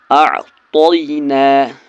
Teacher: یا لین کو جلدی پڑھنا ہے معروف آواز کے ساتھ، اس کو کھینچنا نہیں ہے